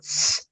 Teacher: outras fricativas pós-alveolar, que é o X, que é atrás do alvéolo. X, sem pôr a língua aqui atrás do dente e chiar, quase que assoprar dentro da boca.